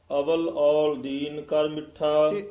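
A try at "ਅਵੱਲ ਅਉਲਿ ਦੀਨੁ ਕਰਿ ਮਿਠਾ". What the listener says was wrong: अवल नहीं कहना इसनु कस के उच्चारण करना अव्वल अव्वल औल दीन कर मिठा अव्वल दा अर्थ हुंदा पहला उत्थे भी अव्वल ही कहना अव्वल अल्लाह नूर पाया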